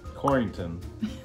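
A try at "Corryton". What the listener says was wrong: There's no N there. Say it again.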